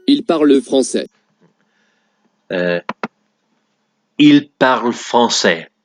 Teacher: The ending is ent, but for some reason you just don't normally pronounce the ent.